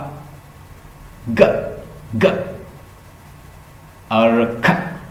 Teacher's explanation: खा साउंड जैसे ही आप बोलेंगे तो आपको पता होगा कि सॉफ्ट पैलेट को टच कर रही है कोई चीज